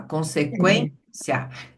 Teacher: a sílaba tônica é o quem